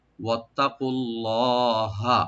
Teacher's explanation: আল্লাহ লফজ জালাল এখানে এটা আমরা ডিপ করে পড়বো, লাস্টে হাতে কোনো টান নাই, ওয়াত্তাকুল্লাহ, আল্লাহকে ভয় করো, লাআল্লাকুম।